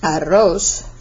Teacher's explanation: Double R in Spanish is either trilled, or you could say rolled. So if you said arroz, for example, that double R is rolled